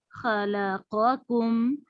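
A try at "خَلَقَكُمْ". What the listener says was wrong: خو کو بھی ہیوی کرنا ہے، خلقکم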